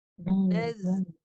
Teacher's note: Huruf Z ni desiran. Desiran lidah belakang di bawah.